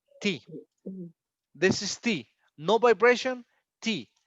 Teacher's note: these are called voiceless because we don't have vibration